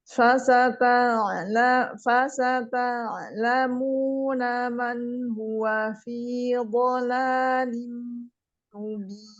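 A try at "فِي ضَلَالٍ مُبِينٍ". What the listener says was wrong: Dotnya lebih tebal lagi. Fi dhalalim mubin. Dan juga pada tempo idghamnya ya di situ juga.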